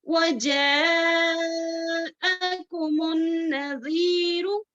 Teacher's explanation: یہ اگر دوسرے کلمے میں ہو تو منفصل آ جاتا ہے، لیکن متصل جو ہے اٹیچ، اٹیچ مد، اٹیچ مد، ملی ہوئی مد ہے یہ. اس کو کیا کر کے کتنی مقدار میں پڑھنا ہے، ہم کو 4 سے 5 حرکات کے برابر کھینچ کر لمبا کر کر پڑھنا ہے